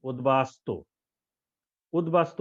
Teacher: বজায় আছে এবার আমরা দেখব শেষ উ নম্বরটা উ নম্বরে বলছে উৎ উপসর্গের সঙ্গে ব ফালা যুক্ত হলে ব এর উচ্চারণ বহাল থাকে